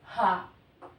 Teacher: के उच्चारण में मुख गुहा मुख गुहा खुली रहती है और वायु बंद कंठ को खोलकर झटके से बाहर निकल जाती है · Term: काकल वर्ण